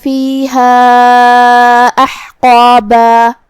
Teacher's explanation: مد جائز منفصل کا معنی ہے کہ حرف المد پہلے کلمہ کے آخری میں ہو اور اس کی وجہ جو کہ حمزہ ہے وہ دوسرے کلمہ کی شروعات میں آئے. مد جائز منفصل میں ہم اپنی آواز 2 سے 4 مد کے برابر لمبی کریں گے. کلمت احقابہ میں یہاں شروعات میں حمزہ قطع ہے، لہذا ہمیں حمزہ کو ظاہر کرنا ہے.